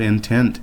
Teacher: You'll notice that there is a little accent symbol after the tent part of the word, which tells you which syllable is stressed. We pronounce this word intent with the stress or with the accent on the second syllable, as indicated by the accent mark, rather than intent.